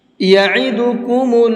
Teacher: یہ عین ہے، اس کو حلق سے نکال کر کے پڑھیں گے۔ یعیدو نہیں پڑھنا ہے، یعیدو پڑھیں گے تو حمزہ کا ساؤنڈ ہو جائے گا، عین کا ساؤنڈ الگ ہوتا ہے اور حمزہ کا ساؤنڈ الگ ہوتا ہے، ساؤنڈ کے بدل جانے سے میننگ بھی بدل جاتے ہیں، اس لیے اس چیز کا دھیان رکھیے گا۔